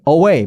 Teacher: 강세가 어디냐면 뒤에 있어요. way에 있어요. way. 어에는 강세가 없어요.